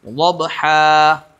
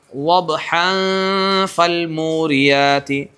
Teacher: وقف کریں گے تو الف سے بدل کر آپ پڑھیں گے